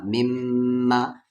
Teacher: میم پر شد ہے تو یعنی غنہ ہوگا